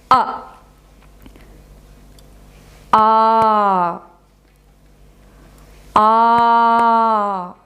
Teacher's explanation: in Samskritam we have longer swaras that are longer than the deergha swaras. And they are called pluta-swaras.